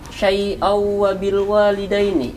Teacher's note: ketika diwasol situ terdapat hukum idgham bigunah, yakni tanwin bertemu dengan wawu